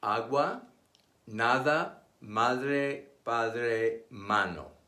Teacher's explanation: It is pronounced like the A in the English word father. Unlike the English A, which has several pronunciations, this Spanish vowel is pure and always consistent.